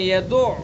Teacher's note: عین کو توجہ سے پڑھیں گے، یدعو حلق سے نکالیں گے، حلق کے بیچ سے